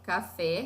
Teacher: oxítona a sílaba tônica é a última